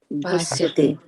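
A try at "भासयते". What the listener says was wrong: So again, when there is a here and there's so this will be saya. It won't be sya. So bhasayate will go, like that.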